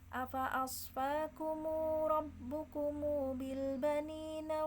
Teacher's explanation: Kalau hanya warna ungu berarti tiga imam tersebut bersepakat untuk membaca ungu ini dengan satu wajah atau satu cara, yaitu dipanjangkan dua harokat mimnya